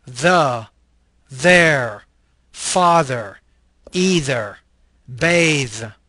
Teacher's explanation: This is a interdental fricative voiced consonant.